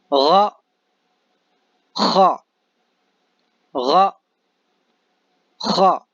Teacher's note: یہ حلق کے اوپر والے حصے سے ادا ہوتے ہیں